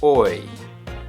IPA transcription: ɔɪ